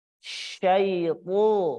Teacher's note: Kemudian menaikkan juga pangkal lidah. Ada sifatul huruf itbaq, tertutupnya aula tengah lidah. Kemudian sifat isti'la, terangkatnya pangkal lidah.